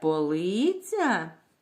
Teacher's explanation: запитаємо це полиця який склад вимовляємо голосніше другий склад вимовляємо голосніше наголошений склад у цьому слові другий